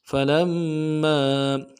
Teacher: लाम को मीम साकिन के साथ मिलाना, मीम के ऊपर तशदीद जोर देंगे